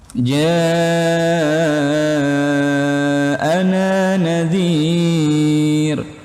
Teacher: Ini mad wajib karena dia bertemu hamzah dalam satu kata. Nah, mad wajib, teman-teman, panjangnya 4 atau 5 harokat.